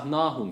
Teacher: Burada sadece ha harfi sakin ve kalındır Onun dışındaki harfler incedir